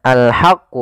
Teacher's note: ha kecil dibaca dengan ha alirkan nafas